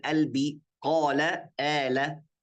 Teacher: Kalau lahjat Mesir, bahasa Mesir itu kita gak bilang qalbi, tapi bilang albi